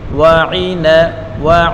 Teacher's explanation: واو کے اوپر پڑھی حرکت ہے, عین کے نیچے بھی پڑھی حرکت ہے, اور نون کے اوپر بھی پڑھی حرکت ہے, تینوں کو بغیر کھینچے پڑھیں گے